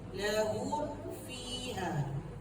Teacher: Sekadar rapat di bibir tu masuk fi.